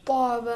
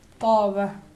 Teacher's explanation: تے کو جو ہم اردو میں تلفظ کرتے ہیں اس کو تھوڑا سا بھاری تلفظ کریں گے تو ہمارا حرف توئی درست ہو جائے گا